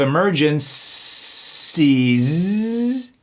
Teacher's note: We got that C that sounds like an S, and that S that sounds like a Z.